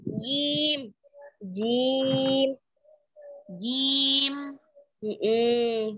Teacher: jangan masuk hidung jim ya. Jim lurusin suara jim.